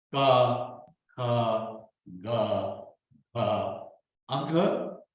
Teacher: So the sounds are from the throat, come from the throat, guttural